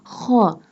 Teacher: kha pronounced from the upper part of throat